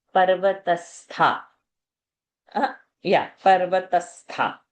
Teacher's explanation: Tha is a Mahaprana